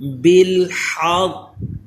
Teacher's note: وقف کی حالت میں اس کو پڑھیں گے بالحق، یہ جو قاف پہ میں نے تھوڑی دیر لگائی ہے جماؤں سے ادا کیا ہے، یہ اس کا قلقلہ ہے، اور تشدید کو باقی رکھا ہے۔ بالحق، او جو آواز لوٹ کر آئی تو یہ قلقلہ ہوا، اسی طرح قاف کو پر بھی پڑھیں اور ہا کو حلق کے درمیان والے حصے سے ادا کریں، سانس کی آواز اس میں آئے، یہ ہا کا مخرج حلق کے درمیان والے حصے سے ہے۔